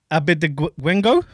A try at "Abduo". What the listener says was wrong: You got to say it together.